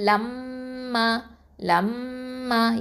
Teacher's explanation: இங்கே என்ன இருக்குது, மீமில் ஷத்தா இருக்கிறதுனால என்ன பண்ணணும், அக்குமல் கொன்னா பூரணமாக கொன்னா செய்யணும், மூக்கில் நிறுத்தி வச்சு அதை ஓதணும்